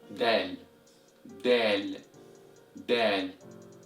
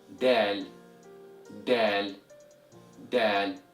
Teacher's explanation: And the way you pronounce this letter is by pressing the tip of your tongue against your front mouth, right behind your front teeth, then breathe out as you pronounce this letter. So Dal is an alveolar letter, which means a sound comes from the tip of the tongue being pressed against the alveolar ridge